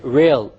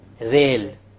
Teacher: The English R comes from the middle of the tongue, whereas the Arabic Ra comes from the tip of the tongue, along with the incisors or the gum behind the incisors.